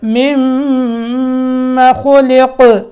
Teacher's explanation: پہلی میم کو دوسری میم سے ملانا ہے، دوسری میم مشدد ہے تو یہاں کیا ہوگا؟ غنہ ہوگا، اور خلق یہاں قاف میں قلقلہ ہوگا، ٹھیک ہے۔